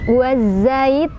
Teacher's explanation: Huruf yang disukunkannya yaitu nun. Jadi cara bacanya panjang, boleh lebih dari 2. Boleh 2, boleh 4, boleh 6 harokat. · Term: Mad arid li sukun